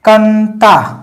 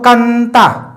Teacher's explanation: अनुस्वार पूरी तरीके से नाक से ही बोला जाता है, मुंह से नहीं होता है। ठीक है, ये अनुस्वार है और अनुस्वार का जो उच्चारण होता है वो नाक से होता है, केवल और केवल नाक से।